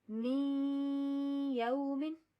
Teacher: یہ جو ہم درمیان میں نون کی ساؤنڈ لا رہے ہیں، می یومن یہ غنہ ہے. ہم اس کو ڈائریکٹ مِز یومن نہیں پڑھ سکتے, وہ غلط ہوگا.